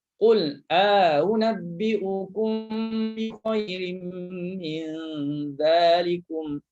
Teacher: Juga kita baca dengan tashil hamzah yang kedua. Tashil hamzah yang kedua berserta idkhal alif.